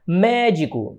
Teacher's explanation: Porque a sílaba tônica é a antepenúltima. Todas são acentuadas, todas as pró-paroxítonas.